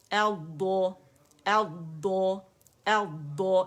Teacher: اس میں استطالت بھی ہے اس میں رخاوہ بھی ہے